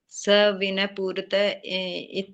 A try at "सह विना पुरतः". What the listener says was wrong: इसमें यह के ऊपर एक ही मात्रा होनी चाहिए।